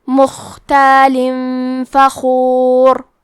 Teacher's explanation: آخری میں لام کے نیچے تنوین زیر ہے، پھر حرف الفاء آتا ہے کلمت فخور، فا حروف الاخفاء میں سے ہے تو ہم یہ حکم کو غنہ کے ساتھ ادا کریں گے اور حرف الخا کو موٹی آواز میں پڑھیں گے مختال فخور۔